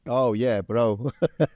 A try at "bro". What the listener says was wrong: Bro, again, the vowel on bro, it sounds nice, but bro. But his is bro. It's a little bit forward, just like that A I mentioned before.